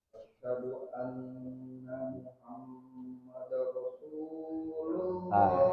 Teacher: Diidghamkan tapi tidak didengungkan.